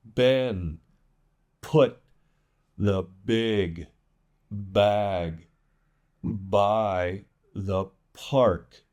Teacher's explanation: Again, really blow out those P's.